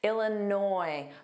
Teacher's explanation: Make sure you don't pronounce that S on the end. It is entirely silent. It is never pronounced.